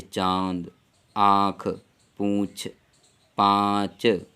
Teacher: नाक और मुंह से दोनों से किया जाता है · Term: अनुनासिक